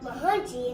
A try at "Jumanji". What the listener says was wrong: It's not called Mahunji. It's called Jumanji. Jew. Say Jew. He hasn't enunciated his J's yet.